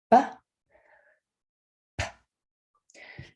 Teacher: With a B, we turn on our voice and you hear the sound.